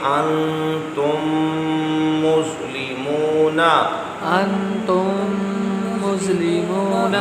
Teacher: میم ساکن کے بعد میم آیا تو بھی غنہ ہے